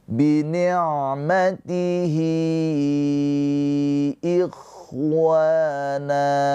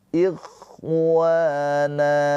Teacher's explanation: Wa dibaca panjang dua harakat. Na juga dibaca panjang dua harakat. Yang ini mad thobi'i.